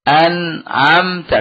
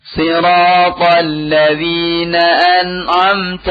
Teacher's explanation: Siratal ladzina an'amta. Tekan ujung lidahnya ya. Pada lahmatul asnan ya.